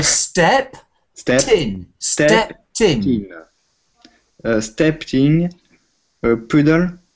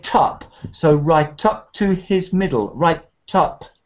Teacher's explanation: The consonant kicks the next vowel word, top, tin. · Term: joined the words